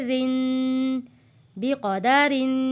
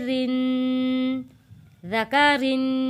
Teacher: बा ज़ेर बी, क़ाफ ज़बर क़ा, बिक़ा, दाल ज़बर दा, बिक़ादा, रा दो ज़ेर रिन, बिक़दारिन। जब रा के नीचे ज़ेर आएगा, रा को हम बारीक पढ़ेंगे